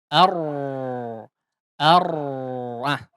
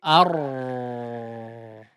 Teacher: Nah, kalau mau dipanjangkan ya huruf R atau huruf Ro, Al-Quran ini adalah ar, ar, ah, seperti itu, ar. Jadi getarannya tuh cuman di awal saja. Selebihnya hilang ya atau samar.